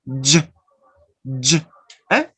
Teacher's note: First, the sound da, that is a stop, and then the second sound that is fricative. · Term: affricate sounds